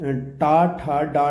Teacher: मूर्धन्य व्यंजन वो होता है जिसमें जीभा जो है ऊपर की ओर मुड़कर साउंड पैदा करती है।